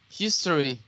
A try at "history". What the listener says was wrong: If you say history, you're saying 3 syllables. Try with 2 syllables.